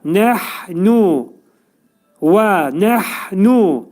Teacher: Hə hərfinə fikir vermək lazım. Boğazın ortasından çıxarılır.